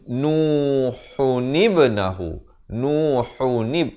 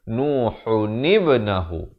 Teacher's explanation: Didatangkan nun dan diberikan baris bawah. Nun baris bawah bertemu ba yang bertanda mati. Jadi ada pantulan di situ. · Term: khalqalah